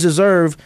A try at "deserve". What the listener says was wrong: You didn't put the whole D in there. You said deserve.